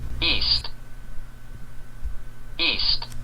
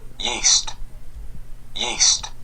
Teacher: east는 여기에 성문 파열음을 넣어서 east 그렇게 발음하는 데 비해서 yeast는 성문 파열음에 삽입이 없이